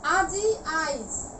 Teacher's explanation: আজি আইজ পরের ইকার আগে নিয়ে আসছি, এই কারণে এটি অপিনিহিতি।